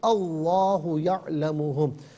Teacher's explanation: لام پر کھڑا زبر، ایک الف کی مقدار کھینچ کر پڑھیں گے اور اسے پر پڑھیں گے